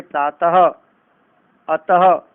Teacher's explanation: फिर आते हैं विसर्ग, जिसमें अंत में ह की ध्वनि आती है